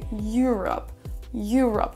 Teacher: On a un petit peu un son you au début.